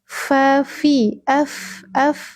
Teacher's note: Fi bukan pi. Fi, ujung gigi seri atas menyentuh perut bibir bawah.